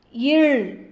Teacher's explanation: மேல்வாய் பல்லின் அடியை நாக்கின் ஓரங்கள் தடித்து தடவுவதால் பிறக்கும் மெய்யெழுத்து